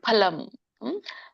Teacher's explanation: ಪ ಹ ಪ ಫ ನೋಡಿ, ಎರಡು ತುಟಿಗಳು ಕೂಡ್ಬೇಕು. ಫ ಅಂತಂದ್ರೆ ನಮ್ದು ಮೇಲಿನ ಒಂದು ಹಲ್ಲುಗಳು ಕೆಳಗಿನ ತುಟಿಗೆ ಹತ್ತಿದಾಗ ಫ ಆಗತ್ತೆ, ಆ ಫ ಹೇಳಂಗಿಲ್ಲ. ನೆನ್ಪಿರ್ಲಿ, ಕೇವಲ ಎರಡು ತುಟಿ ಕೂಡ್ಬೇಕು.